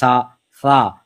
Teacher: اس کو بالکل نرمی سے پڑھنا ہے، سیٹی کی آواز نہیں، نارملی پڑھنا ہے. ٹھیک ہے، اس کی آواز کو بولڈ نہیں کرنا آپ نے.